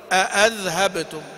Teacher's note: وابن ذكوان وروح بهمزتين محققتين